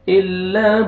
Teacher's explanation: با قلقلہ double sound آئے گا. الا ابتغاء، ان پر الف کے اوپر مد ہے، مد واجب یا مد لازم 3 سے 4 الف کے برابر آپ نے کھینچنا ہے.